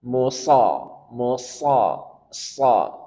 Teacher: Ingat sad dia punya sifat safir, desis, desis, sa, dan tebal. Kemudian arah dorongan suara huruf sad ke langit-langit mulut.